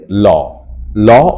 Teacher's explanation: ল উচ্চারণ করতে গেলে জিওভার দুপাশ দিয়ে বাতাস বের হবে সেক্ষেত্রে ল উচ্চারণ করার সময় জিউভার ডগা দাঁতের মূলের সাথে আঘাত